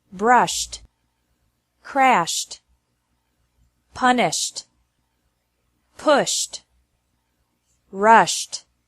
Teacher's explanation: Ed is pronounced like T after verbs ending with an sh sound